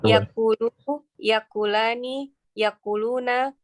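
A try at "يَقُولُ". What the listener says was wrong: Yang bikin bingung ada hamzahnya itu. Jangan pakai hamzah. Yaqulu, yaqulani, yaquluna.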